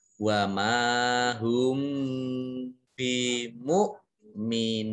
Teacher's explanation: Kemudian hum bi, mim sukun bertemu dengan huruf ba, ini dibaca samar-samar, namanya ikhfa syafawi